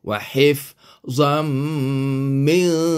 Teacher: Jadilah dia idgham ma'al ghunnah. Jadi kita kena dengungkan zam ini, kena dengungkan 2 harakat.